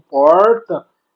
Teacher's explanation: ao pronunciar o R, aprende a falar, né, de forma mais retroflexa